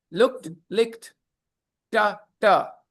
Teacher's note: After ka sound, it is always ta. D will be pronounced ta after ka sound.